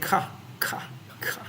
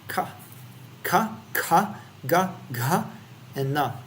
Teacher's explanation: Sounds made by a constriction between the back of the tongue and the velum. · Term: guttural sounds